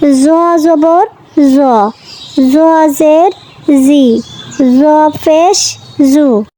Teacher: জ জিহ্বার আগা সামনের উপরের দুই দাঁতের আগা থেকে মোটাভাবে আদায় হবে,